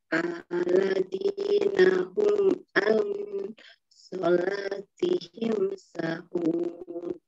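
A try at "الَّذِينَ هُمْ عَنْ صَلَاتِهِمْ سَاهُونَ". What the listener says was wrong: Sanya kurang satu ketuk. Sahun.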